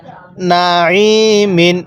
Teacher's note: আইনটা উচ্চারণের সময় গলার মধ্যে হালকা চাপ দিবেন তাহলে আইনটা সহি শুদ্ধ উচ্চারণ হবে